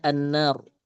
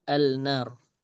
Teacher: jadi huruf lam ini didghamkan ke huruf setelahnya. Jadi bacanya an-nar, bukan al-nar.